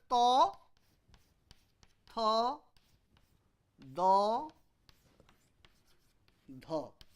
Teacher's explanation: Unvoiced, unaspirated, unvoiced, aspirated, voiced, unaspirated, voiced, aspirated. This is velar, this is retroflex, this is dental or alveolar. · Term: dental sound